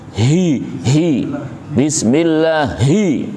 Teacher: hi itu banyak udara keluar dari mulut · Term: hamas